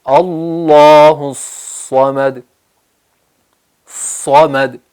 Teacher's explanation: زبان اوپر اٹھ رہی ہے، جڑ تالو کی طرف اٹھ رہی ہے اور آواز بولڈ ہو رہی ہے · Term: صاد